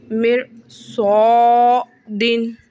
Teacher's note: را ساکین کے بعد صاد حرف مستعلیہ کا حرف ہونے کی وجہ سے را کو پر یعنی موٹا